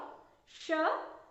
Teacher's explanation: जीभ मूर्धा से टकराती है, इसलिए इसका नाम है मूर्धन्य श।